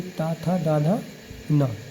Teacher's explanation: जिसका उच्चारण करते समय जीभ का अग्र भाग दांतों से लगता है। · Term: दंती व्यंजन